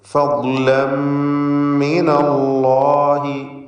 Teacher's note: അല്ലാഹ് എന്ന ഇസ്മുൽ ജലാലയിലെ ലാമിനെ തടിപ്പിക്കണം, തഫ്ഖീം ചെയ്ത് ഉച്ചരിക്കണം